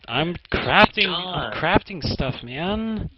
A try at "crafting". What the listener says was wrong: Sounds like you're saying crapping stuff.